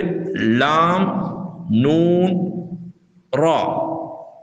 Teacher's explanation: அதே போன்று லாம், நூன், ரா, இந்த 3 எழுத்துக்களும் நாவின் நுனி மேல் முன் பற்களுக்கு மேலுள்ள முரசில் படும்போது இந்த 3 எழுத்துக்களும் வெளியாகும். அதாவது நாவின் நுனி மேல் முன் பற்களுக்கு மேலுள்ள முரசில் படும்போது வெளியாகும். இம்மூன்று எழுத்துக்களும் வெளியாகும் இடங்களில் சிறிய வேறுபாடுகள் உள்ளன.